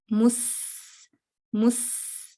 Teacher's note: سین پہ جو صفیر کی صفت ہے وہ زیادہ واضح ہے اور اس میں تھوڑا پریشر بھی آتا ہے